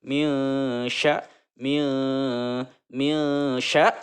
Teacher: Shin tersebut ke dalam huruf ikhfa. Maka cara membacanya itu dengan cara samar ya, menyembunyikan serta dengung.